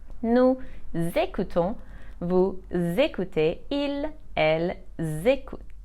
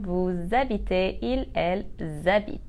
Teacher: don't forget the z link for the plural subject pronouns.